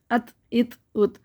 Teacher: اس میں تھوڑی سی ہمسیہ ہو جائے گی، ہلکی سی معمولی سی